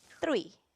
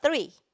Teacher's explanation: Quando eu vou falar o TH em inglês, eu preciso pôr a língua para fora.